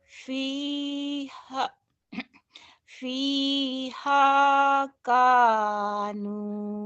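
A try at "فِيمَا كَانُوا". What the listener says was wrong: bukan ha itu mamim, kebalik Fima, fima kanu.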